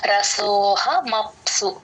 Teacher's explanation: సో ని కొంచెం ఒక రెప్పపాటు దీర్ఘం ఎక్స్టెండ్ చేస్తే సరిపోతుంది. రసోహ మప్సు మప్ సు సు తో ఎండ్ అవ్వాలి. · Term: అవగ్రహం